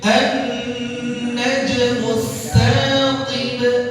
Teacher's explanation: qib ada ba sukun karena waqaf di akhir kata jadi qalqalah kubra